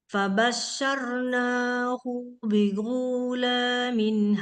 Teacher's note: Kalau kita G, kalau orang Arab itu gha-nya itu dari ujung tenggorokan, sama dengan makhraj kha. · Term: gha Arab